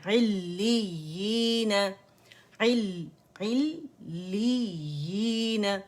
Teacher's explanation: پہلی یا جو مشدد اس کو جماؤ دینا ہے اور دوسری کو یا مدہ کی طرف پڑھنا ہے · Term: مد تمکین